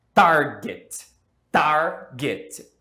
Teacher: A tônica está no começo. Então, apesar de ser consoante e vogal, não dobramos.